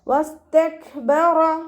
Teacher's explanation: കാഫിന് സുക്കൂനാവുമ്പോൾ കുറച്ച് എയർ പുറത്തോട്ട് പോകണം, കാറ്റ് പുറത്തോട്ട് പോകണ സൗണ്ട് കൊടുത്തിട്ട് വേണം ഉച്ചരിക്കാൻ കേട്ടോ. വസ്തക്ബറ റ ഫതഹയാണ്, ഉയർത്തി ഉച്ചരിച്ച് കൊടുക്കുക കേട്ടോ.